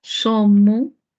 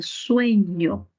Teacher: La E y la O breves y tónica pasaron a ser diptongos